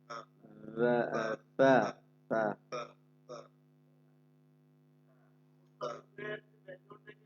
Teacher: ফা, জিহ্বার আগা সামনের উপরে দুই দুটো আগা, ফা নরম আওয়াজে হালকা বাতাস বের হবে